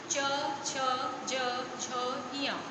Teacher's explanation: च को बोलते समय जीभ हमारी तालू से टच हो रही है ऊपर, इसलिए इसका उच्चारण स्थान तालू है। ठीक है, तालू, तालव्य इसको बोलते हैं।